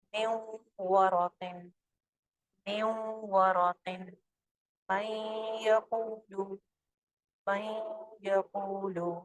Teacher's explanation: اب آپ کے پاس ناقص ادغام کا کالم ہے واو اور یا کا, جس پہ غنہ کے ساتھ ادائیگی ہوگی کیونکہ اس میں نون کی آواز تھوڑی سی باقی رہ رہی ہے